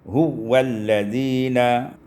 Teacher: Pada ayat 249 huwa walladzina, idghamul waw fil waw, diidghamkan waw pada waw, sehingga kita baca huwalladzina.